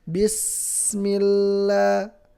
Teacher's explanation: Bismillah, milla, karena lamnya bertasydid, ya. Jadi temponya lam sukun sama sin sukun lebih panjang sin sukun. Karena sin sukun itu rokhawah, lam sukun itu bainiyah, ya.